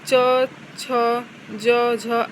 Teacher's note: स्पर्शी संघर्ष व्यंजन के अंतर्गत च, छ, ज, झ आते हैं।